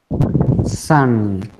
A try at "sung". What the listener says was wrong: Yeah, very good. You're doing great.